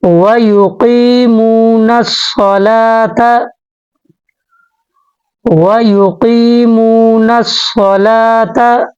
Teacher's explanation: نون کو صاد کے ساتھ ملا کر پڑھیں گے